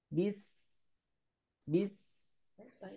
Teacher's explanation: Jadi huruf sin itu keluarnya dari ujung lidah dengan ujung gigi seri bawah. Kemudian ada suara desisnya. Ketika sukun, alirkan suaranya.